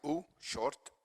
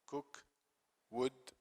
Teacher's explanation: back vowels, high, we say u, short.